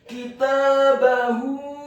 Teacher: Kitabahu, huruf kafnya dibaca tipis kasrah 1 harokat, huruf ta-nya dibaca tipis fathah 2 harokat karena harokatnya tegak. Kemudian huruf ba-nya dibaca tipis fathah 1 harokat dan huruf ha-nya dibaca tafkhim tebal dhammah 2 harokat karena harokat dhammahnya adalah harokat dhammah yang terbalik.